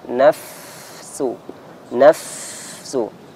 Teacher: Ketika fa disukun maka dialirkan